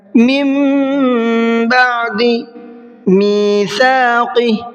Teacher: تو اب یہاں پر نون نہیں پڑھیں گے بلکہ میم پڑھیں گے، میم، من نہیں پڑھیں گے، اور ساتھ میں غنہ بھی کرنا ہے۔ · سا کو نرمی کے ساتھ میں پڑھنا ہے اور قاف کو منہ بھر کے پڑھنا ہے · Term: اقلاب